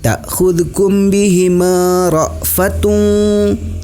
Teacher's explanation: hukum bacaannya adalah ikhfa. Cara membacanya yaitu dengan mendengung.